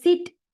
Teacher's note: is fricative because it partial closer creating turbulent airflow.